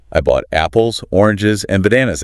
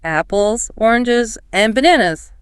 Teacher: And then there's the pattern for lists. It's often a rise on each item until the last one which falls.